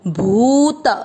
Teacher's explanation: भू पे बड़े ऊ की मात्रा लंबा खींचना और त में अ मिक्स करना है